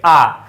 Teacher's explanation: विवृत का मतलब यह होता है कि मुख का पूरा खुलना